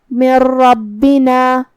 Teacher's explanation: تو ہم یہ نون کو رام میں ملا کے بغیر غنہ سے لیکن تشدید کے ساتھ یہ حکم کو ادا کریں گے. · کلمت ربنا جو کہ را پہ تشدید زبر کا ہے تو ہم حرف الراء کو بھاری آواز میں پڑھیں گے. یہاں را کا حکم ہے تفخیم. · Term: ادغام بغیر غنہ